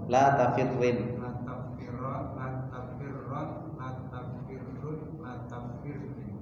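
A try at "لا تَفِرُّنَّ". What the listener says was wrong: Nah, tasdidnya diperjelas ya.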